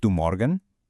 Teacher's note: it rises. The melody goes up and that means it's a yes or no question.